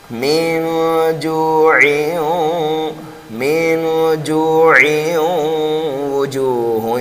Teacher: یہاں پر ادغام بغیر گننے کے ہو رہا تھا، اور یہاں پر ادغام جو ہوگا وہ گننے کے ساتھ ہوگا